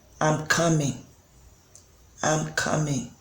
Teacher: that coming which is at the end of the sentence is a kind of uh going down